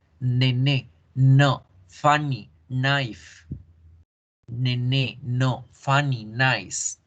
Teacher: es un sonido nasal alveolar